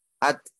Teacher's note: Tak sukun, dia udaranya ngalir, suaranya berhenti.